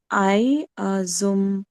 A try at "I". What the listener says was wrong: Not I, it's E.